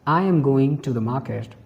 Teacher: we stress generally on the words going and market. So function words like am are used and focus a little less. · For example, if there is a sentence, I am going to the market. So in this sentence, we stress generally on the words going and market. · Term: sentence stress